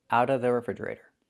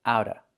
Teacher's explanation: The T is a fast D and you don't hear the v sound.